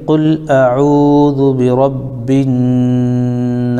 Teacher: نون کی آواز کو ایک الف کے برابر ناک میں روکیں گے، اگر میم پر تشدید ہے تو ایک الف روکیں گے، تو یہاں پر ہم روکیں گے قل اعوذ برب۔ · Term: غنہ